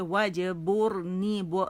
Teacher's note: وجبرنی را موٹی ہے. بر با باریک